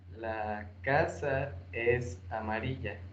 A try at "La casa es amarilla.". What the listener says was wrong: No hagas pausa antes del verbo. Repítelo todo de manera corrida y solamente marca los acentos.